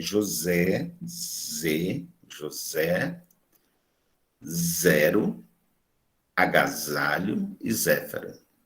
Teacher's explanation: O articulador ativo, a lâmina da língua, o articulador passivo, os alvéolos. O véu palatino precisa estar levantado. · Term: fricativa vozeada